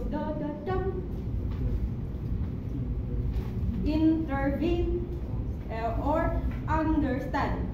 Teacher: And there's anacas. Two unstressed syllables followed by one stressed syllable. So it goes da da dum.